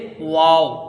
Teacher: वाव जो आता है उसमें होठ मिलते नहीं बल्कि होठों की गुलाई से अदा होता है। जैसे वाव ऐसे करके इसको अदा किया जाता है।